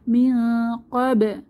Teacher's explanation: নুন সাকিনের পরে কফ এসেছে, তাহলে এখানে ইকফা গোপন করে পড়তে হবে,